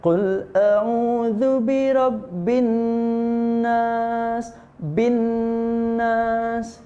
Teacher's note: kalau tasydid di huruf nun dan mim itu ditekan dan didengungkan, atau bahasa tajwidnya itu digunnahkan.